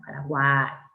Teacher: cerrada U, abierta A, cerrada I, con acento en la A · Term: triptongo